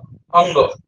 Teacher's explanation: तो म्हणजे व्हायब्रेशन होते त्याच्यामध्ये ते सरळ सरळ असं समजा की वर्णाचा उच्चार जिभेच्या तोंडातील इतर भागांना स्पर्श होण्या व्यतिरिक्त नाकातूनही होतो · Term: अनुनासिक